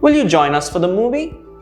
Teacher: the rise in intonation towards the end